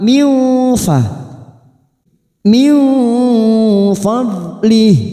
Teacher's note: kita baca tafkhim, mullahu, miu nun sukun bertemu fa ikfa hakiki kita samarkan 3 harokat, siap masuk kata huruf fa, bibir kita siap membentuk huruf fa